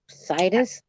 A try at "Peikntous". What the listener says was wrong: No, it's toss at the end, Tous, like yeah, I think so.